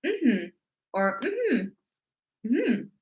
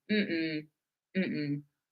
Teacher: Okay, so our intonation is going to be more rising. When we're using it to say no, we're going to have a bit more of a falling intonation. · Okay, so it's the intonation is going to be different when we're using it to say yes. When we're using this one to say yes, we're going to say mm-hmm or mm-hmm, mm-hmm. Okay, so our intonation is going to be more rising.